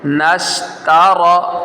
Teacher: نون کو شین کے ساتھ ڈائریکٹلی ملائیں گے